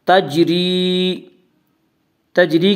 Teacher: جب ان حروف کے اوپر جزم ہو تو ان کو پڑھتے وقت ان کے مخرج ٹکر کھا کر الگ ہو جاتے ہیں۔ تجری، تجری کی را کو باریک پڑھا جائے گا، اس کا قاعدہ ہے کہ را کے اوپر زبر اور پیش ہو تو را کو پر پڑھا جائے گا، را کے نیچے زیر ہو تو را کو باریک پڑھا جائے گا۔